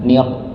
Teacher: ketika kita mendapati huruf ra di situ maka ditebalkan